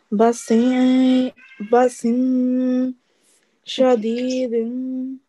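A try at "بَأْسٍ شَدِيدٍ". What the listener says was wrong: Okay, the sound of noon should not be manifested. Okay? So there is going to be a slight nasal sound, soft nasal sound, but the sound of noon is not going to be manifested. Okay?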